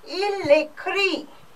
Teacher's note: there is a clash of vowels. So this your A gets cancelled.